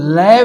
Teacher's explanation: हवा जीवा के दोनों पार्श्व भागों से या बगल से होकर बाहर निकलती है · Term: पार्श्विक व्यंजन